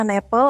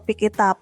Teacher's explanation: Contohnya an apple atau pick it up. Bunyi akhirnya mengalir langsung ke kata berikutnya, bukan diputus satu-satu. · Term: consonant to vowel linking